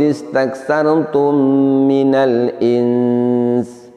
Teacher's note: Pada lafaz insi di sini hukum bacanya adalah ikhfa hakiki, karenanya nun sukunnya kita samarkan. Selain itu, bersamaan dengan itu, sinnya yang berada di paling akhir juga kita tampakkan makhraj dan sifatnya.